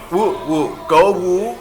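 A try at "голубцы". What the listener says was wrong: It's L U.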